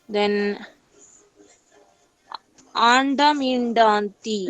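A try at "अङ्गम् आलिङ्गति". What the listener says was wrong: No, that is Nga. Kakagaganga. So, Anga Malingati.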